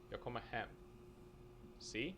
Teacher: would all have accent one but because of the sentence porosity only the last word is stressed and thus only the last word is actually pronounced with accent one the first two words are just kind of rushed through you'll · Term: sentence emphasis